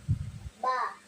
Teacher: இரு உதடுகளை ஒன்றோடொன்று இணைத்து அழுத்தம் கொடுத்து உச்சரிக்க வேண்டும்.